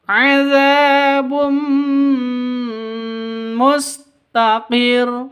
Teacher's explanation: Idgham bighunah ee bighunah dengan deng dengung. Idgham masuk bighunah dengan deng dengung. Jadi masuk disertai dengung